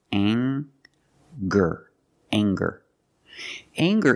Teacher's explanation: we have the nasal sound plus the hard G the G sound together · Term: nasal ng sound